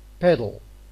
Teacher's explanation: because of the absence of the vowel the l assumes the responsibility of the peak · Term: syllabic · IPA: [l̩]